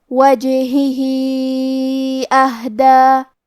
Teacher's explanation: ہا ساکن ہے، لہذا ہمیں ہا کو ظاہر کرنا ہے اور ہا کی ادائیگی حلق کے نیچے والے حصے سے ہے · یہاں حکم ہے مد صلہ کبریٰ، لہذا ہم اپنی آواز 2 سے 4 مد کے برابر لمبی کریں گے